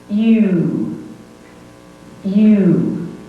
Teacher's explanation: a diphthong made up of E, U, blended. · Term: long sound